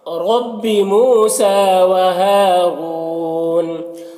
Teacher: را کے اوپر پیش ہے تو را کو پر پڑھیں گے، اور واو ساکن سے پہلے را کے اوپر پیش ہے تو واو مدہ ہوا، ایک الف کے برابر کھینچیں گے۔ · اگر یہاں پر وقف کریں گے تو نون کا زبر سکون سے بدل جائے گا تو پھر مد عارض وقفی ہوگا